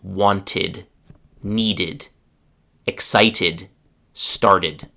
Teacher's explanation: So remember after t and duh, the ed past tense ending is pronounced it. ID with two sounds, not one, but two. ID. Now listen to eight very common verbs ending in duh or tu with the past tense ending it on the end with sentences.